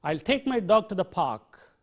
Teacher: And what has happened is, the other words like I'll, my, to, and the are weakened. They are not said in their full forms, but they are weakened. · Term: weak form